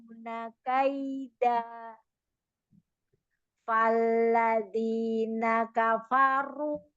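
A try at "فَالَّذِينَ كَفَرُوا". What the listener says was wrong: Sempurnakan dulu fanya. Fathah fa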